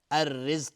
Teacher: را حکمش ترقیق هست نازک تلفظ میشه چون کسره داره